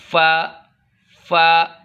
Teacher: निचले होंठ के अंदर वाला हिस्सा ऊपर के 2 दांतों के साथ लगाएंगे तो फ़ा अदा होगा।